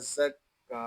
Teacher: انتا زا کاف زبر زک کاف کھڑا زبر کا انتا زکا کاف کو ہم ایک الف تک کھینچ کر پڑھیں گے کیونکہ یہاں کھڑا زبر ہے